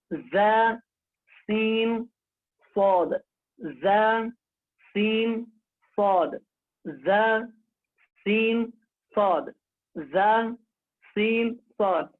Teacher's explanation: زبان کی نوک اور ثنایا سفلا کا کنارہ کچھ اتصال ثنایا اولیاء سے